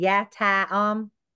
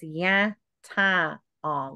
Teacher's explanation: So instead of saying yata om, is ya ta om with that little bit of nasal. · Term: nasalized sound